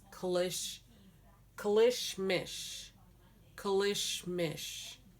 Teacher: we still don't use the r we say we replace the r with an l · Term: an l dialect